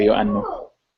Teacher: the O epsilon being pronounced as a U sound